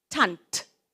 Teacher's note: The D and the T at the end of the word sound the same. Tant. T-A-N-D, but it sounds like a T.